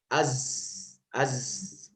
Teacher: Lebih az lebih bergetar, lebih lapangkan lidah menyentuh langit-langit. Az seperti itu.